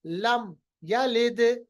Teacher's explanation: लम मीम की आवाज को जाहिर करके हमने फौरन यलिद पढ़ा। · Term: इजहार